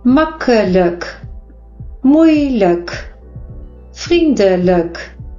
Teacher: And the I is pronounced as E because it's unstressed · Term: Dutch schwa sound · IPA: /ə/